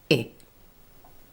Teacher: The first sound is the short vowel sound I, with the tongue high and the lips slightly spread.